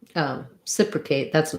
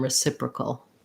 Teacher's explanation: But then when we get to reciprocal, instead of an A vowel at the end there, we have just a cul with a syllabic L. So thinking about that kind of like cull, you keep the back of the tongue down.